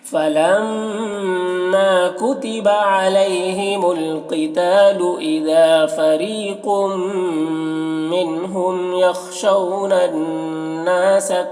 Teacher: او میں یہاں پر واو لین ہے، اسے جلد پڑھنا ہے